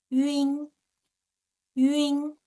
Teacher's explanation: the first one ü with a front nasal sound